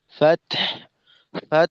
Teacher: হায়ের এই আওয়াজ বাতাসটা অবশ্যই থাকতে হবে, অন্যথায় আমাদের শব্দটা পূর্ণ হবে না, শব্দ অসম্পূর্ণ থেকে যাবে।